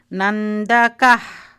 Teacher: The visarga is coming from the throat.